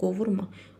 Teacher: İnkarda olanda vurğu əvvələ düşür